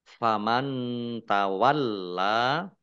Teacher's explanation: nun sukun bertemu dengan huruf ta bacaan ikhfa dibaca samar-samar,